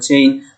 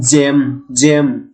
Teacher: আমাদের জিহ্বার আগাটা গিয়ে লাগবে দাঁতের সাথে, জিহ্বার মেইন বডিটা একটু উপরের দিকে উঠবে